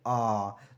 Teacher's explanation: हमारा जीभ का मध्य भाग काम करता है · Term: मध्य स्वर